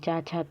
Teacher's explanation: चा छा तालु से बोला जाता है। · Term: तालव्य व्यंजन